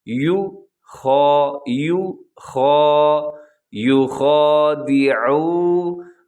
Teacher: یو خا، یو خا، یو خادعو، عین کا خیال رکھنا ہے، عین پہ آپ نے پورا زور لگا دینا ہے کہ عین کا آپ اس کو حلق سے ادا کریں